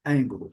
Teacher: É aquele som onde leva a língua ao fundo do céu da boca, ali no palato, na região lá antes do céu da boca, quase antes do céu da boca, e a gente pronuncia L. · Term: som do L